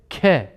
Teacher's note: Elimizi Ağzımızın karşısına koyduğumuz zaman çok bol bir şekilde K şeklinde böyle bir hava çıkar